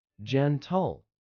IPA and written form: ˈdʒɛntəl (gentle)